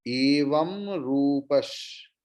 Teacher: विसर्ग के बाद शकार है, तो विसर्ग की उच्चारण, विसर्ग pronunciation will be exactly like shakara, shiva shakara